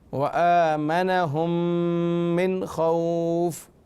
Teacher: میم ساکن کے بعد میم آ رہا ہے، ادغام شفوی میم ساکن کا قاعدہ